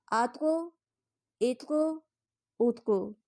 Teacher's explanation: طا قلقلہ حروف ہے اور طا پہ جزم ہے، اس کو پڑھتے ہوئے قلقلہ خوب واضح ہوا اور آواز واپس کی طرف آئی